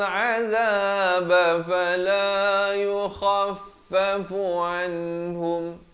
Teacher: Izhar halqi, izhar syafawi. Nun mati bertemu ha dan mim mati bertemu waw. Kedua-duanya hukum izhar, ada tanda mati asli di atas kedua-dua nun dan mimnya.